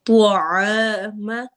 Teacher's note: آ کو لمبا کرنا ہے چونکہ الف سے پہلے فتحہ زبر آ رہی ہے تو یہ دو حرکہ لمبا ہوگا